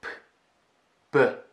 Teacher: Same motion, only the B is voiced.